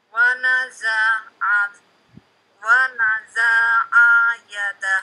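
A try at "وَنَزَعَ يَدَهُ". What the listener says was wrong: Itu za dengan ain-nya panjang kalau begitu. Pendek kan?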